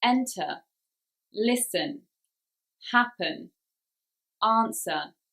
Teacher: in e or e n for example enter listen happen answer the stress there is on the first syllable